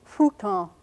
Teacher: it's sort of an F like sound but it doesn't involve the teeth it involves the two lips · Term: bilabial fricative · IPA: ɸ